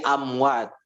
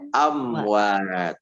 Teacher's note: Amwat itu mimnya jelas di bibirnya, itu disebut dengan idhar syafawi.